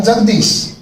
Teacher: जगत प्लस ईश बराबर जगदीश, इसमें ता दा में बदल रहा है, इसलिए संधि है।